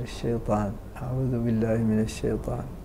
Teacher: فلابد من توضيح هذه الياء فهي حرف لين لابد من تبيينه حتى لا يذهب بعضه في حال النطق به ساكن